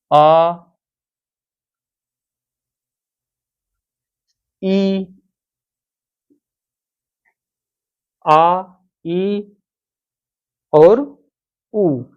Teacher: द्विमात्रिक, क्योंकि इसको बोलने में दो मात्रा के बराबर समय लगता है। जैसे इसको अ, इसको आ, इसको ई, इसको ई, इसको उ, इसको उ। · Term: दीर्घ स्वर